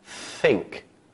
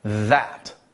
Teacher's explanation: dental sounds involve placing the tongue between both the top and the bottom rolls of teeth there are only two sounds made in this way and those are both of the th sounds one is voiced